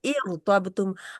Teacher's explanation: لیکن کیونکہ الف آ گیا ہے، حمزۃ الوصل آ گیا ہے، تو جب حمزۃ الوصل را جزم والی سے پہلے آ جائے تو را موٹی رہ جاتی ہے